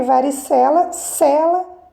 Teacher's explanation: perceberem que varicela cela fé é a sílaba mais forte portanto a sílaba tônica é a penúltima sílaba e a classificação é paroxítona